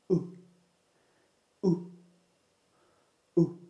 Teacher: To produce the sound, put your tongue close to the top and near the back of your mouth. Then make a short voiced sound with your mouth closed. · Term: U sound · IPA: /ʊ/